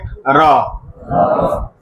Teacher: ऐसा व्यंजन जिसके उच्चारण में जीभ में कंपन हो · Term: प्रकंपित व्यंजन